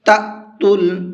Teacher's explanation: تَأْتُل، یہ حمزہ ساکن ہے اور حمزہ ساکن کو جھٹکے کے ساتھ میں پڑھا جاتا ہے